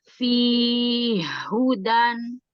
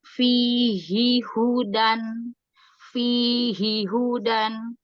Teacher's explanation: Di riwayat Hafs ini dibacanya izhar, bukan idgham. Hak pertama dibaca jelas.